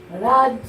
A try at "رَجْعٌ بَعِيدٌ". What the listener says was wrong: রাজ কেন? রর উপর জবর দিলে র হয়। রজ রজ ওম গুণনা করতে হবে। রজ ওম